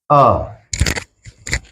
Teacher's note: जिह्वा का मध्य भाग प्रयोग होता है, यानी कि आ।